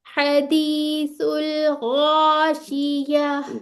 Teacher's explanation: या पे फतह, और ता जो ये ता के ता मरबूता, इसके ऊपर जब हम वक्फ करते हैं तो ये हा में तब्दील हो जाती है।